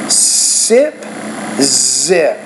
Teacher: And also, the second thing you want to work on is that Z, sip, zip. So that Z, you need to make that Z a little bit more voiced